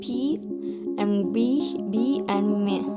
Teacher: in the bilabial, sounds are produced with both lips